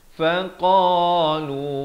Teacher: qaf di pangkal kerongkong, fa di bibir ini. Faqalu, fa satu harakat, qa dua harakat dan lu juga dua harakat.